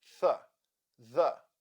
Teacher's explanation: simply blow your air gently but remember try not to vibrate the vocal chords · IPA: /θ/